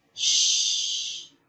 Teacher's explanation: there is no vibration and that means this sound is an example of voiceless consonant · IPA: /ʃ/